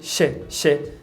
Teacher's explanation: A palavra she é com a vogal I longo, mas aqui eu percebo que reduz para she.